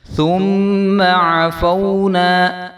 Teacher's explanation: عین کو ہم نے لمبا نہیں کرنا اور عین کی آواز آنی چاہیے